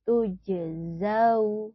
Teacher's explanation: Jim sukun merupakan huruf qalqalah, maka dibacanya harus memantul. Tujzau. Nah, ada fathah diikuti wawu sukun lagi, maka dibacanya jangan tujzau, tapi zau.